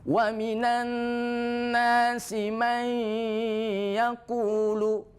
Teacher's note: Karena ada nun mati, campur antara suara dengung dengan ya. Dengung sekalipun tidak, may yaqulu juga tidak boleh, tapi may ada suara khaisumnya, ada suara sengaunya. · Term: idgham bi gunnah naqis